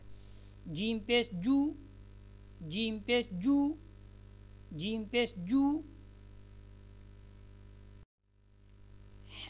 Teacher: जीम जो है वो तालू के दरमियानी हिस्से से लगती है, तो वहाँ से क्या होती है, जीम अदा होती है।